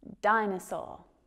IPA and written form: ˈdaɪnəˌsɔː (dinosaur)